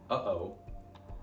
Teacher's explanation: there's a glottal stop between uh and O